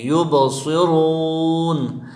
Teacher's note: صاد حروف موٹے حروف میں سے ہیں، اس کو موٹا پڑھیں گے، را پر پیش آیا ہے تو اس کو بھی موٹا پڑھیں گے، یبصرون، اور وہ مدہ بھی ہے، وہ ساکن سے پہلے را پر پیش آیا ہے تو اس کو ایک الف کی مقدار کھینچ کر پڑھیں گے اور نون کے زبر کو ساکن پڑھیں گے۔